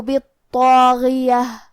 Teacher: حرف الغین کی ادائیگی حلق کے اوپر والے حصے سے ہے